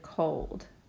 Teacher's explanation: because that is a closed syllable exception it's an exception because the O is no longer a short o sound as it should be in a closed syllable but a long sound